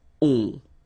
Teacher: And then the ending for il, elle will be O-N-T. You don't pronounce the final T, so you get the nasal on.